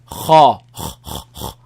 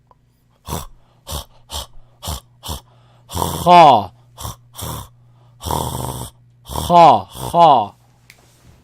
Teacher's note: It's top part of the throat, but it's a dry part of the throat.